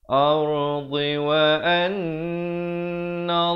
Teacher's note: Nun ni wajibul gunnah dengan 2 harakat, dan la itu dibacakan 2 harakat kerana lafzul jalalah.